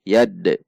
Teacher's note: Dal sukun berarti ada pantulan saat membacanya. Yad. Yaitu qalqalah.